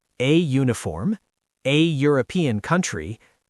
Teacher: it sounds like it starts with Y, which is a consonant sound